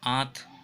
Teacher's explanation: इसमें अनुनासिक होगा, नाक और मुंह दोनों का प्रयोग हो रहा है इसके उच्चारण में